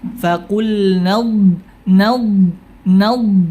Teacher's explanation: ini huruf Dod punya sifat istitalah istitalah itu terdorongnya lidah ke depan setelah tepi lidah menempel ke makhrjnya setelah tepi lidah itu membentur